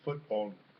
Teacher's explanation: the L changes to an N final nasal stop in Thai